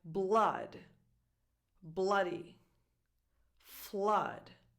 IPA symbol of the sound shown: ʌ